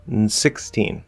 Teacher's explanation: I don't have to say in, I don't have to say un. I could just do n, n, n. You start with n.